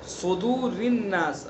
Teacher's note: صدور، صدور کے صاد کو پر پڑھیں گے چونکہ حروف مستعلیہ میں سے ہیں، صدور الناس، را کو باریک پڑھیں گے اور الناس میں جو نون مشدد غنہ کریں گے